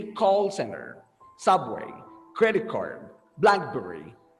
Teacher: if we have a common noun that is made up of two parts like compound like that we stress the first word the first part